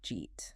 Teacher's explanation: Another classic example is, did you eat? Which often becomes just, jeet. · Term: connected speech